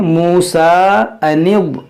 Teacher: یہ نون ضاد سے ملائیں گے، یہ خالی الف نہیں پڑھیں گے